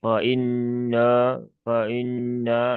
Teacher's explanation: Fa inna di sini diawali dengan huruf fa ya. Huruf fa itu huruf yang tipis ya. Huruf yang tipis sehingga dia dibaca tipis saja jangan dibaca dengan fo ya.